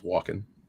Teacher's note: I don't ever think I've heard the L pronounced in that one.